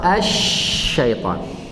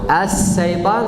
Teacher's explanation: Kalau saya baca atau as, itu huruf beda dan tempat keluar beda. Kalau shin dari tengah lidah, kalau sin dari ujung lidah, jangan campur.